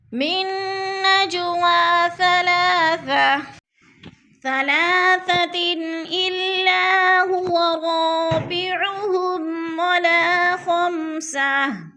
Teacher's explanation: من نجوا ثلاثہ، نج پہ جو ہے قلقلہ ہو رہا ہے، جیم ساکن ہے اور حروف قلقلہ میں سے ہے تو ہم نے ادھر قلقلہ کرنا ہے